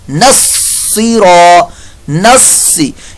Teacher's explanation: यहाँ पर स्वात की जगह सीन की आवाज़ ना आपकी आए, अगर आपकी सीन की आवाज़ आई तो ये लहने जली आपकी होगी